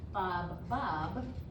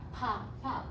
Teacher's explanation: It has to be voiceless with the P. Turn your voice on for the ah and turn your voice off for the p.